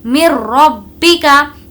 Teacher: نون کو یہاں پر اسکپ کر کے میم اور را کو ملا کر پڑھیں گے۔ مر ربی کا، دیکھیے یہاں پر بھی ہم نے بالکل نارمل پڑھا کیونکہ نون ساکن کے بعد را آیا ہے، اور را اگر آئے تو بغیر غنے کے پڑھیں گے۔